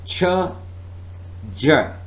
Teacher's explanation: affricate closure then slow separation